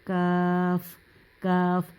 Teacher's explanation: تھوڑا سا نیچے والی سائڈ پہ آپ کو ہونا ہوگا، تو زبان کی جڑ کے قریب اس کے مقابل اوپر سخت تالو سے لگے تو وہاں سے یہ لفظ ادا ہوتا ہے